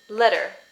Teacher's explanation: So this one, if you remember from our video on the schwa, we're going to start by making a schwa, which is just an upside down E, and then we're going to add rhoticity. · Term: schwa with rhoticity